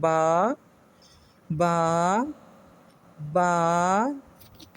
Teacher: با کو پڑھنے میں ہمارے ہونٹوں کا اندر کا گیلا والا حصہ، تری والا حصہ آپس میں ملتا ہے تو با ادا ہوتا ہے